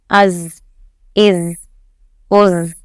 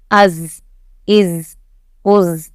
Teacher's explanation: زا میں سیٹی کی آواز، جو مکھی کی بھنبھناہٹ کی آواز ہے وہ آنی چاہیے، تو اس میں از آ رہی ہے نا، بھنبھناہٹ کی آواز، اس طریقے کی آواز آنی چاہیے، یعنی آپ کا حرف صحیح ادا ہو رہا ہے۔